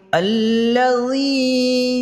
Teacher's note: الذی یا مدہ ہو رہا ہے، ایک الف کے برابر کھینچ کے پڑھیں گے